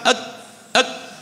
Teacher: huruf kaf ak, dari sini dari pangkal lidah